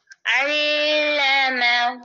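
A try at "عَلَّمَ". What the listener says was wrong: अब शद पर ना देर ना लगाया करो गुन्ने की तरह, वो सिर्फ गुन्ने पे करते हैं अल्लमा।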